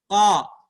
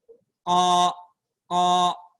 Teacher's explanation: Huruf qaf berada di pangkal lidah, ya, pangkal lidah. Qa. Tempel lidahnya itu ke langit-langit lunak atas